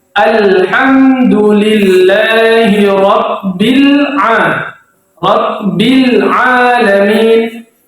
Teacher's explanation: lamnya mati jelas. Tidak boleh memantul. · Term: alif lam qamariyah